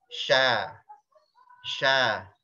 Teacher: Ujung lidah dia ngambang, nggak ngapa-ngapain. Tidak kena gigi.